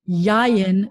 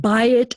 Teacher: the accent is going to be on the first syllable